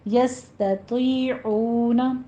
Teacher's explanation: یست، یہ دونوں باریک پڑھے جائیں گے، سین پر ہمس ہوگا سیٹی کی آواز کے ساتھ، اور تا بھی باریک پڑھی جائے گی، آگے یا مدہ ہے تو آپ کو پر پڑھتے ہوئے یا مدہ کھینچیے۔ عون میں واو مدہ ہے، عین وسط حلق سے ادا کریں گے